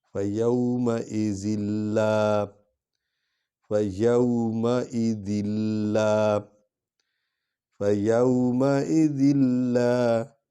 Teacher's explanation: ذال کے نیچے دو زیریں ہیں لیکن ایک پڑھیں گے، آگے ادغام کریں گے کیونکہ لام پر شد ہے